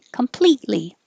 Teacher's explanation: the t is completely silent because your tongue is going up for the t and then it stays there without saying completely you just hold it there completely until you're